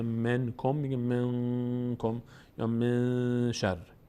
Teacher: اگر بعد از نون ساکن و تنوین نه نون میم بود، نه ب بود که تبدیل به میم بشه، نه حروف یرملون بود که تبدیل به حرف ما بعدش بشه و نه حروف حلقی بود که همون جوری که هست ادا بشه، قاعده 4 اجرا میشه که اخفاست. یعنی ما نون رو مخفی میکنیم در بینی، از بینی ادا میکنیم.